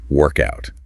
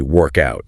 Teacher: As a noun, meaning the session of physical exercise itself, the stress must be on the first syllable. Workout. >> Workout.